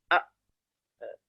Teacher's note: Tidak ada angin yang keluar pada saat kita mengucapkan hamzah. Itu disebut dengan al-jahar.